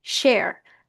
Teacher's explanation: Start tayo sa vowel sound na E, glide tayo sa vowel sound na A. If you combine this together, A. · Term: diphthong vowel sound, A